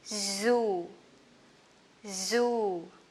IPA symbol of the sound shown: zu: